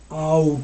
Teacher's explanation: there's a diphthong ah so it's more ah and then a little bit of ooh at the end